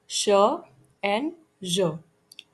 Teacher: post alveolar, ये थोड़ा alveolar ridge के पीछे होता है